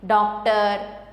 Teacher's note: औ और आ के बीच की ध्वनि से होता है